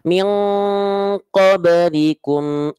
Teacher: Ikhfa abad ya. Tebel, tebel dan dengungnya itu kuat.